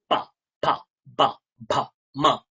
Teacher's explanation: দুটো ঠোঁট জুড়ে, না জুড়লে আপনি পকার উচ্চারণ করতেই পারবেনই না।